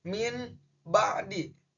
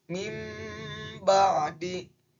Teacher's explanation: Tapi berdasarkan dengan hukum bacaan iqlab, nun matinya harus digantikan dengan mim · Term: iklab